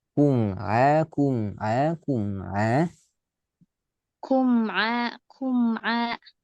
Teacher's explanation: Inahuakum enggak qalqalah. Coba kum a tiga kali tanpa mantul